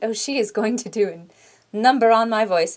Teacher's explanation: exasperated breathy and high high pitched but breathy